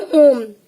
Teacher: ओम में ओ की ध्वनि का जो उच्चारण है वो ह्रस्व से तिगुना जा रहा है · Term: प्लुत स्वर